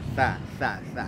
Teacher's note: tha ujung lidah kita ya berada di antara gigi muka atas dan gigi muka bawah, keluar sedikit dari batas gigi ujung lidah kita